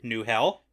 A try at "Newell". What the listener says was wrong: I don't think we pronounce the H in fantasy. You forgot that rule. Lots of silent H's. Thrown all around.